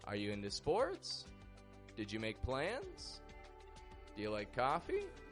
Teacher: the habit of raising your tone in the ending